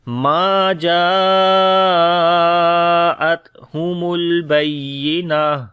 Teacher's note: آگے بینہ آخر میں جب رکیں گے تو تا ہا بن جائے گی · جب حروف مدہ کے بعد حمزہ اسی ورڈ کے اندر آئے تو وہ مد متصل ہوتی ہے، 3 سے 5 سیکنڈ لمبا کرتے ہیں